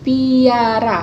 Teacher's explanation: pengangkatan daun lidah ke arah langit-langit keras pada artikulasi primer kecuali bunyi palatal bunyi lain dapat disertai palatalisasi misalnya bunyi p